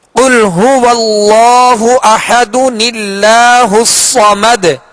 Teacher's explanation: تو میٹھے میٹھے اسلامی بھائیوں، یہاں تنوین ہے، دال کے اوپر دو پیش ہیں، لہذا تنوین کے نون ساکن کو زیر دے کر اس نون قطنی کو اللہ عز و جل کے لام کے ساتھ ملا کر ہم آگے پڑھیں گے